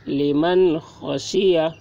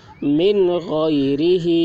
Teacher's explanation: نون ساکن کے بعد حروف حلقی میں سے خا آ رہا ہے، اس لیے نون ساکن کو ظاہر کر کے بلا غنہ کے جلد پڑھیں گے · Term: اظہار